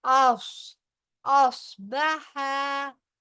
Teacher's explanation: स्वाद जो है हैवी वर्ड में से है, मुस्तालिया में से है, लिहाजा जुबान को जड़ से पीछे से उठाकर ऊपर